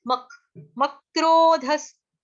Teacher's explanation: सत्य मक, म के ऊपर आघात है, क्यों? क्योंकि क्रो, क्र, क्र जो है वो संयुक्त अक्षर है, इसलिए आधे क का आघात म के ऊपर आएगा।